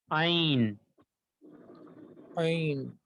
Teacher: ایک اور حلق کے درمیان سے ادا ہوتا ہے عین